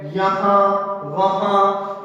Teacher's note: इनका उच्चारण नाक और मुंह दोनों के द्वारा होता है, इसलिए ये अनुनासिक कहलाता है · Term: अनुनासिक व्यंजन